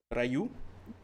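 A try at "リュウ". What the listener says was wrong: It's RYU, not R. Like, I'm guessing it's Ryu actually or something. I guess it's Ryu. I just say Ryu.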